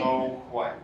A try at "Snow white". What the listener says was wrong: Yes. Now, try not to pulse. think a little bit more like you're spinning a thread, and Shelby's pulling the thread from you. So, and that's actually your breath. You're just moving forward.